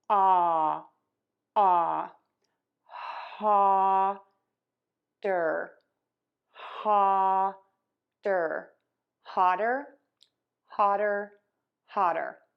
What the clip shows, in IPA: hɑdər